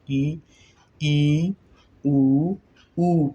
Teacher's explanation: लगभग मुख द्वार बंद है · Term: समृद्ध स्वर वर्ण